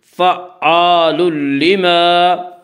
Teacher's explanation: اس کا قاعدہ یہ ہے کہ نون ساکن اور تنوین کے بعد اگر حروف یرملون میں سے کوئی حرف آئے تو ادغام ہوگا، لام و را میں ادغام بلا غنہ ہوگا، یہاں تنوین کے بعد لام ہے اس لیے یہاں پہ ادغام بلا غنہ ہوگا